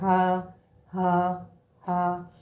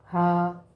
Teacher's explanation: یہ سینے سے نکلتا ہے، اس کو سادہ پڑھتے ہیں ایسے ہا. ہاں یہ دیکھیں نا میں نے اوپر چھوٹا چھوٹا اس لیے لکھا ہوا ہے کہ آپ کو بھی تھوڑی سمجھ آتی رہے.